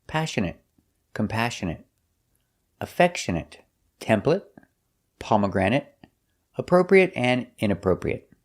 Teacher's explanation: We're going to practice some words that are not verbs, so they're all pronounced with the short it sound at the end